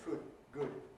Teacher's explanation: Scots say ‘food’ /fud/, ‘good’ /gud/ with the same vowel in each. · In Scottish English, there is no difference between /uː/ and /ʊ/ at all.